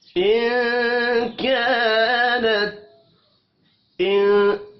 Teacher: نون ساکن کے بعد کاف اخفاء حقیقی ہوگا · کا الف مدہ ہے، ایک الف کے برابر کھینچ کر پڑھیں گے. نت تا ساکن پر قلقلہ نہیں کرنا